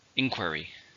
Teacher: How many syllables are in inquiry? There are 3. Stress on the first.